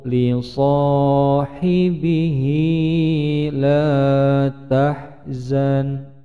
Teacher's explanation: Ini mad sila qasirah, bacaannya cukup dipanjangkan dua ketukan.